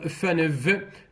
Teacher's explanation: Number 2, labiodental, for example, FNV, between the lower lip and the upper front teeth